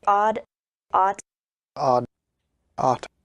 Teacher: The vowels sound the same. · both of those are variants of the same vowel, so no one notices that they're different